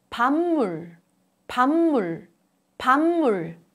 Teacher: Under the influence of 무, 부, a plosive becomes 무, a nasal sound.